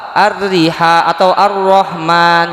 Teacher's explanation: ketika alif lam bertemu ro, alnya itu hilang, yang terjadi ro-nya bertasydid. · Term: Alif lam syamsiyah